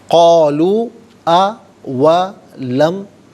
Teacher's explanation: قَالُوا یہاں پر آپ دیکھیں واو مدہ کے اوپر مد کی علامت ہے، مد منفصل ہے، مد جائز بھی کہتے ہیں۔ منیمم اس کو 3 الف کی مقدار کھینچ کر پڑھنا چاہیے، زیادہ سے زیادہ 5 الف کی مقدار کھینچ کر پڑھا جا سکتا ہے